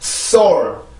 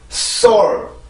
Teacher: S 발음은 치조마찰입니다. 치조마찰 무성음이죠.